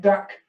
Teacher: in the south of England, the duck vowel may conflate with the hand vowel.